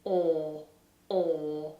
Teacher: In British English, this is a huge space inside the mouth, the lips are rounded, and the vowel doesn't move. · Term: OR vowel